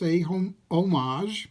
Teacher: it's a homage, because it's an unaspirated H